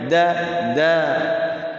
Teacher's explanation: Fathah dal ya, da, karena tadinya pendek satu ketukan da. Karena ada alif berarti dua ketukan. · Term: mad asli